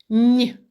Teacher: другий звук нь так приголосний м'який